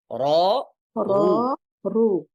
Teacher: ফাতহা এবং দম্মা অবস্থায় উচ্চারণে মোটা হবে কিভাবে? র, র রু, রু ঠিক রু।